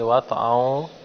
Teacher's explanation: حمزہ کو واو کے ساتھ ملایا ہے، دونوں ہونٹوں کو خوب گول بھی کیے ہیں۔